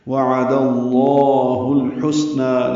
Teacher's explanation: دو حرکات لمبا کرنا ہے، ہا کو لام سے ملانا ہے، لام ساکن پہ اظہار قمری ہے، ہا وسط حلق سے ادا ہوگا